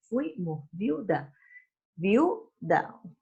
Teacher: Usted lo pronuncia en forma de sílaba y ve que se permanecen juntas la I y la U. Eso es lo que se llama dictongo.